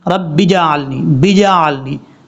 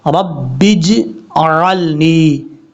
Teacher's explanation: आवाज़ लौटेगी ज़रूर इस हर्फ में, जीम में कलकला ज़रूर करेंगे, लेकिन इतना भी कलकला ना हो कि जीम के ऊपर ज़बर पढ़ा जा रहा है